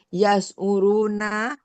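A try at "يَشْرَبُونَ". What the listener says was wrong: Yasrobuna, Bu. Bukan yasuru, yasrobu.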